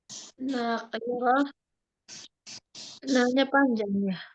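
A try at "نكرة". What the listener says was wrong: Bukan, nakirah nggak panjang, Ibu. Nakirahnya biasa. nakirah ya.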